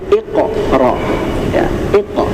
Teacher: Karena qof-nya bersifat alistila atau tebal. Berbeda dengan huruf dal yang ada di akhir bacaan.